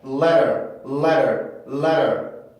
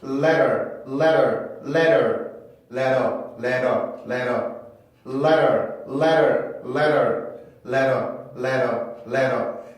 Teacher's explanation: 우리나라의 리을 발음보다 조금 더 가벼운 소리, 조금 더 빠르게 치고 내려오는 소리가 바로 플랩